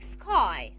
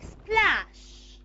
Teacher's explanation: you cannot have the sound sa before the voiceless stop. If you have it, you don't aspirate.